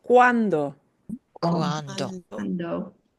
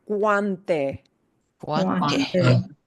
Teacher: This is wa. We pronounce each vowel, they just slide together.